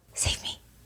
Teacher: And it sounds like a very breathy low.